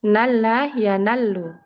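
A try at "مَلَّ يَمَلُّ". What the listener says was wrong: Ma. Pakai mim. Dong.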